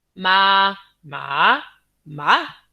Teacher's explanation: the same syllable pronounced in the same way with different tones. So rising tone, a falling tone, a full rise tone mean different things. As different as mother and horse.